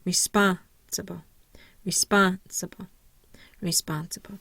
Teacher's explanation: my primary stress is on the second syllable